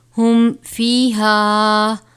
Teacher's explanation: میم ساکن کے بعد حرف فا آیا ہے، یہاں پر غنہ نہیں کریں گے کیونکہ یہاں پر اظہار شفوی ہو رہا ہے